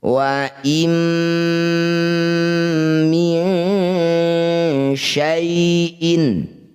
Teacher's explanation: Dengungkan dua harakat saat dengung lisan kita bersiap bunyikan syin · Nun sukun bertemu mim disebut bacaan namanya idgham bi gunnah. Bunyi nunnya awalnya wa in, langsung masukkan pada mim, langsung mingkem, langsung rapat bibir. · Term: idgham bigunah, ikhfa ausat